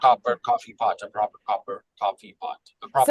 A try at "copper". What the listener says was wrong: So on copper is where I hear that you need a little bit more time.